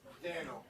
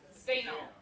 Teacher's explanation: I deeply suspect that this is just the voiced counterpart of ST as in Steve. So if you can say Steno, and then just turn your vocal cords on, Steno.